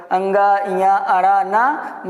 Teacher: एक तो स्पर्शी व्यंजन हो गया, दूसरा होता है नासिका वर्ण, जिसको बोलने पर हमारे नाक और मुख दोनों से हवा निकलती है